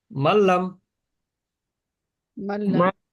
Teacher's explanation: নুন সাকিনের পরে লাম আসলে গুন্না ছাড়া শুধু মিলিয়ে পড়তে হয়